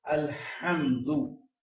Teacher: الحمد یہ حلق کے درمیان سے نکلتا ہے